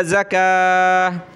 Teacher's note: وقف کیا گولتا پر تو ہا بن جائے گا